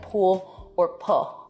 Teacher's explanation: L vocalization. So that's an L turning into a vowel in a word like pool or pull